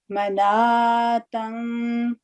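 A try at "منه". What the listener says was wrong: نہیں, منا. یہ والا جو تائے مربوطہ ہے نا, دو نقطے ختم ہو جائیں گے اور اس کے اوپر جزم لگے گی, اس کی باقاعدہ آواز آئے گی ٹچ ہونے کی. منا.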